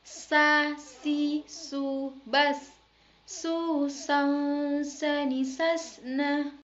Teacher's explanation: sa yang dikeluarkan dengan lidah hampir saja menyentuh dua gigi seri bagian bawah